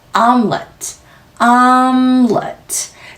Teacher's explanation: M 소리 코로 빠져나오는 시간까지 충분히 호흡 얹어서 연속해서 let 굉장히 짧게 let 발음해 주시면 됩니다.